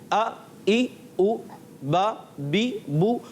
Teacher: حمزہ جب مفتوح آتا ہے تو وہ ہمیشہ تحقیق سے خوب ظاہر ہوتا ہے